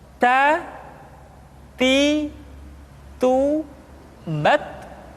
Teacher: huruf ta ketika diucapkan terdengar ada nafas yang mengalir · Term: sifat al-hamas